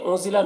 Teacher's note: انزلہ نون میں اخفا ہو رہا، نون کی آواز کو ناک میں چھپا کر پڑھیں گے